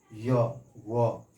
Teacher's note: इनके उच्चारण में श्वास में रुकावट कम होती है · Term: अर्ध स्वर